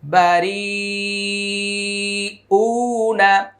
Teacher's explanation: রি হচ্ছে 4 আলিফ টান উ হলো 1 আলিফ টান